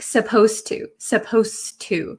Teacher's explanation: the D sound and the T sound become kind of like one sound